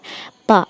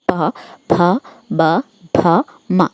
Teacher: പ എന്നുള്ള അക്ഷരം നിങ്ങൾ ചുണ്ട് കൊണ്ടാണ് ഉച്ചരിക്കുന്നത് അല്ലെ പ അതില് നാവോ അല്ലെങ്കിൽ പല്ലോ ഒന്നും ഇടപെടുന്നില്ല പ ഭ ബ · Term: ഓഷ്ട്യം